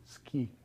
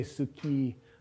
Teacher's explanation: So, the u isn't pronounced You can't You don't say suki unless you're being very slow and careful.